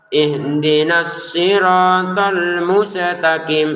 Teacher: Sin sukun ini kalau kita teledor dibaca dengan pantulan dan itu salah.